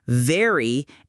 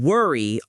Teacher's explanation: For V, your bottom lip touches your upper teeth. For W, your lips form a circle.